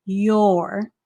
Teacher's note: So you kind of, run the sound of the U into the R to make that or sound.